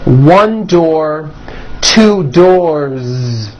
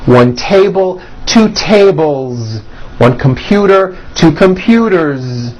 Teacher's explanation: with a voiced Z ending